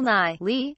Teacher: ni is at a mid-low pitch or even neutral pitch and pops up all the way into the high range on li. This is a rise-to-high pattern and it is fairly common in the language.